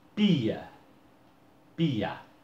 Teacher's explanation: ele é um ditongo crescente, já que o I sai mais fraco do que o A